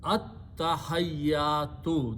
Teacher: Ta is a shamsi letter, so when you combine this, ta will kill the sound of lam and double up its own sound.